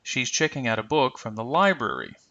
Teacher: this is a normal sentence so we'll use the rising and deep falling intonation